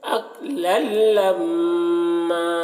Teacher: میم مشدد ہے تو غنہ کر رہے ہیں، اس کے بعد کھینچ رہے ہیں